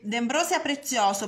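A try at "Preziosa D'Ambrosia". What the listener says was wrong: Non hai detto al contrario, preziosa l'ombra. Hai detto prezioso d'Ambrosia.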